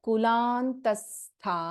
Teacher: we do not chant the ವಿಸರ್ಗ here